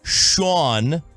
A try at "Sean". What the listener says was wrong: There, you just went Sean, like you were going way up to your northeast.